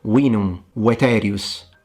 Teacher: the V does not sound like a V, but it sounds like a W